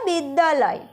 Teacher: দুটি আ একসঙ্গে যুক্ত হয়ে এই শব্দটি আ ধ্বনিতে রূপান্তরিত হয়ে গিয়েছে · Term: সন্ধি